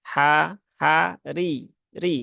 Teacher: dia Ro berbaris kasrah maka rnya tipis ya ha ha ri ri biasa kemudian qnya dia dalam kondisi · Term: roknya tipis